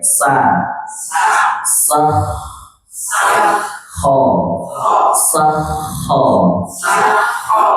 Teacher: Sesuai makhrajnya ditenggorokan atas. Sifatnya apa? Dia ngalir